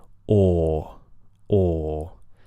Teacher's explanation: Whereas for the thought vowel, the OR vowel, everything is still, and the lips begin rounded, and they remain rounded throughout the entire vowel